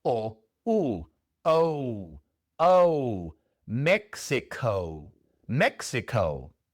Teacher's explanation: la O al final es una O larga y entonces sabemos que es un diptongo, como si fuera O, U, O, Mexico, Mexico.